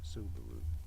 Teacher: Subaru, with a stress on that first syllable.